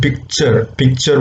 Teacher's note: there is a complete blockage of air it's slow release that is actually affricates